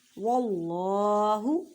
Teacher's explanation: اللہ کے لفظ سے پہلے زبر ہے تو اللہ کے لفظ کو موٹا کر کے پڑھیں